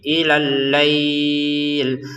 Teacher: Allailnya di sini kita panjangin enam harakat ya. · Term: 6 harokat